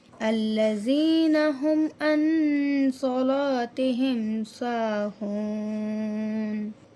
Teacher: نون ساکن کے بعد حروف حلقی نہیں ہے تو یہاں پر گنہ ہوگا۔